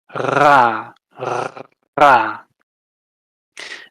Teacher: this is where you're trilling your uvula, that fleshy thing in the back. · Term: uvular trill